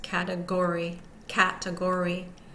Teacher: the first syllable cat so that's primarily stressed the second syllable T is unstressed the third syllable Gore is secondarily stressed and the final syllable e is unstressed